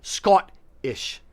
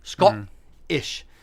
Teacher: you're saying the O like ought. So you're saying Scottish, and you're having a hard guttural stop, a hard guttural T